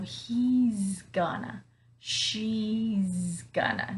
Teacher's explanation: Notice here that I'm using that vibrating Z sound.